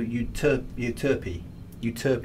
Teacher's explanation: Emphasis is on the second syllable. So Utope is how they pronounce it.